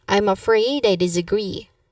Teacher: Now the emphasis here is on the word disagree and also the second syllable on afraid. You emphasize afraid.